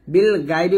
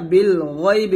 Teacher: এখানে বিল গায়বি বলবেন না, বিল গয়বি বলবেন, গয় মোটা করে।